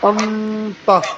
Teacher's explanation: ইকফা মানে হচ্ছে গোপন করা, নাকের ভিতরে লুকিয়ে তাহলে এটা স্পষ্টভাবে মানে ভালোভাবে খেয়াল করবেন, নুন সাকিন অথবা তানবিনের বামে যদি ইকফার এই 15টা হরফের যে কোনো একটা হরফ থাকে তাহলে নুন সাকিন এবং তানবিনকে নাকের ভিতরে লুকিয়ে উচ্চারণ করতে হবে